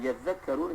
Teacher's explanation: Sebenarnya perkataan yadzakkarun sebagai contohnya, la'allahum yadzakkarun, asal berarti yadzakkarun, kemudian jadi yadzakkarun kerana ta itu diidghamkan dalam zal, kerana dekatnya makhraj kedua-dua perkataan tersebut